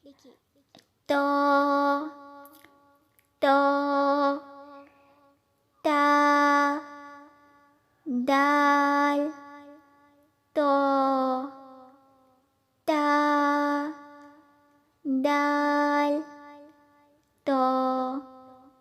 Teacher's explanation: دیکھیے تو کو ہم پور پڑھیں گے کیونکہ یہ حروف مستعلیہ ہے، اس لیے اس کو اسی کے مخرج سے پڑھیں گے، لیکن پور یعنی موٹا کر کے پڑھیں گے